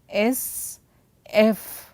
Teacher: So, this is the vocal folds what we have it, which will be vibrating, and the other one what we call it as unvoiced, that is created by air through mouth and then lips